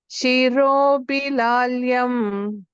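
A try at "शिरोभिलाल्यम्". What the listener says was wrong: Robhi, Mahaprana.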